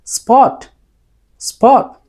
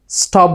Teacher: এস এর পর যদি সে পাঁচটা letter P, T, C, K, Q কিংবা ফ ঠ খ সাউন্ড থাকে তখন হবে আনঅ্যাসপিরেটেড অর্থাৎ সজোরে বাতাস বের করে আমাদের বলতে হবে না